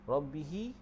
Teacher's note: rabbihi tu dia jadi hukum mad silah qasirah. Jadi panjang dia 2 harakat.